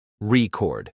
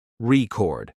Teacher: when you say record as a noun, the stress is on the first syllable, record. But when it's a verb, the stress moves to the second syllable